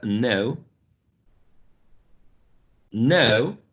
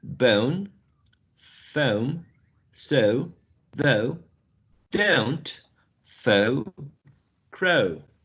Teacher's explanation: a schwa, mid-central position, very lax, goes upwards or glides into a new sound, which is ooh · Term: closing diphthong